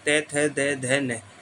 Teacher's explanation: जीभ जो है हमारी दांतों से टकराती है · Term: दंत धवनी, दंत्य ध्वनि